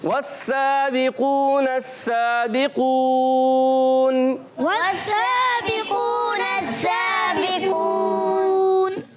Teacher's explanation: واو کے ادا کی دونوں ہونٹوں کی گلائی سے اور واو کو سین سے ملانا ہے